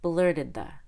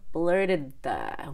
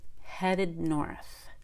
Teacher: say blurted we have to have two syllables in blurted and when you link blurted to another word that starts with a consonant the D will be held